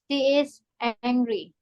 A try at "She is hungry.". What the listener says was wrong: hungry. Hungry. Beda sama ini. Ini angry.